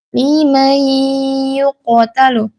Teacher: qof di sini huruf tebal dipantulkan karena dia huruf qalqalah ya. Jangan lim yuktalu yukalu juga hati-hati qof ini tidak memiliki sifat hames.